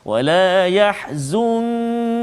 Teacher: Nun mati bertemu dengan kaf, maka ikhfa hakiki sebagaimana yang kita telah belajar sebelum ini, misalnya kita kena baca dengan dengung, bacaan kita dengung dengan kadar 2 harakat